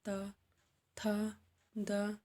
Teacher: अगला है दंत, इसका उच्चारण जीभ के ऊपरी दांतों को छूते हुए होता है